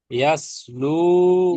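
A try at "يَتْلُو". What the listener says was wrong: ইয়াস নয়, ইয়াত। ইয়া তা সাবার ইয়াত, লাম ওয়াও পেশ লু, ইয়াত লু।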